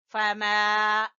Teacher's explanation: ठीक है, फमा युकज़्ज़िबुका, युकज़्ज़ि काफ बारीक है और जाल जबान की नोक सामने वाले दो दांतों के सिरे से जाल अदा होगा। फमा, और मीम को खींचेंगे अलिफ मद्दा की वजह से